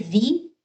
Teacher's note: را کے نیچے زیر آ جائے تو را کو باریک پڑھنا ہے